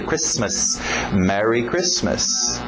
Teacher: O T é mudo, não pronuncia esse T.